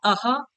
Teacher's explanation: ये अन अह जो आपका अयोग्यवाह है, वो अन जो है वो अनुस्वार भी है, और जो अह है वो क्या है, विसर्ग भी है। और विसर्ग का जो उच्चारण स्थान है वो क्या है, कंठ है।